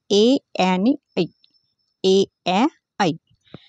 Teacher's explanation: कंठ आणि तालू या दोन्ही स्थानापासून उच्चार होणारे वर्ण म्हणजेच कंठतालव्य वर्ण